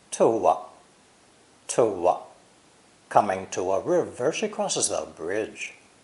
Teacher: To has an oo sound at the end, which explains why the number 2 has a W in the spelling. So we link the W sound with the indefinite article like this.